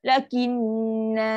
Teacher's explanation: Kalau berhenti, settlekan dengung dulu. Dengung yang panjang, yang sempurna.